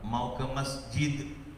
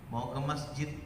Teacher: Seperti pengucapan kata masjid, saat dibaca waqaf dianggap sesuai dengan sifatnya apabila huruf dal sudah diqalqalahkan.